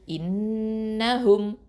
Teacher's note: இப்போது ஹம்சா கெஸ்ரா, நூன் ஷத்தா இன், நூன் ஃபத்ஹா ந, இன்ன, ஹ தொமா மீம் சுக்கூன் ஹும், இன்னஹும். இந்த இன்ன அந்த நூன் ஷத்தா என்ன பண்ணணும், அக்கமல் குன்னா முழுமையாக குன்னா கொடுக்கணும்